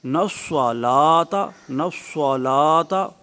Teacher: سواد پر ہو اور لام جو ہے وہ باریک پڑھا جائے